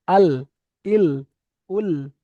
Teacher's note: লামটা হলো জিভের আগার কিনারা এবং সামনের উপরের দুই পাশের গোড়ার দাঁতে লাগিয়ে, গোড়ার দাঁতের সঙ্গে লাগিয়ে উচ্চারিত হবে। তাহলে জিভের সামনের কিনারা এবং উপরের দুই পাশের গোড়ার সঙ্গে লাগবে লাম, তাহলে আল, ইল, উল।